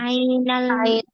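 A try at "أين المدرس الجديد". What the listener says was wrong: Ainal mudarrisul jadidu. Jangan dipisah ya. Kalau baca itu jangan dipisah. Aina al-mudarrisu al-jadidu. Jangan, langsung disambung. Ainal mudarrisul jadidu.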